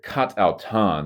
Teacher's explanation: the alpha of kata, has dropped out due to the subsequent vowel there through elision